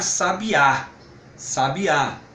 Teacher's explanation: com força na última sílaba, que inclusive recebe o acento apropriado, que é o acento agudo.